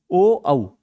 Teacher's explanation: ओ औ का उच्चारण स्थान होता है आपका कंठ प्लस ओट